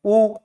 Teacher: जैसे ही आप ऊ बोलेंगे आपके होंठ कैसे हो जाएंगे? गोल। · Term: वृत्ताकार